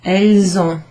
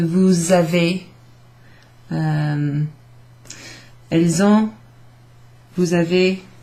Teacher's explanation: Then the S, you make a liaison there, and it sounds a bit like a Z sound.